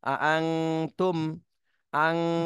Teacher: এখানে নুন সাকিনের পরে ইকফার হরফ আসছে এজন্য ইকফা গুন্না করতে হবে অনুস্বরের মতন এই নুন সাকিনে